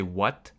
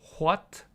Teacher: older speakers when they speak they actually do pronounce the h